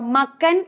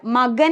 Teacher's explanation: ഖരവർണ്ണമായിരുന്ന കായ്ക്ക് ഒരു മൃദുവിന്റെ ഉച്ചാരണം വരുന്നു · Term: ഉപസ്വനം